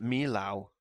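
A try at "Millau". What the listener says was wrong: Yeah, not mil-ow. It's Mio.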